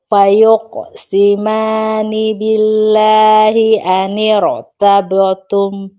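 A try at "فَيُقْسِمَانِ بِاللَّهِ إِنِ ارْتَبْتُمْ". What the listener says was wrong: Inir. I kasroh. Mani. Fayuqosimani. Kasroh sempurnakan.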